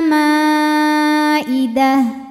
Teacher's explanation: Mad thobiinya Alif didahului fathah hamzahnya I sama-sama dalam kata Maidah maka mimnya dipanjangkan boleh empat boleh 5 harakat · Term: mad wajib muttasil